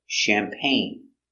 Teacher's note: champagne so we see the g is silent pain together champagne accent goes up at the end